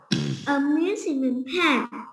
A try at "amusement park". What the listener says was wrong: Very good. Well done.